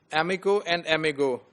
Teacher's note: the place is the same but the voicing is changed